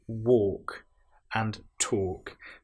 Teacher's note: we have the L, which isn't produced. It's not, we don't hear the L woke.